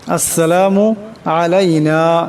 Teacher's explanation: এই নুনকে এক আলিফ পরিমাণ লম্বা করে পড়তে হবে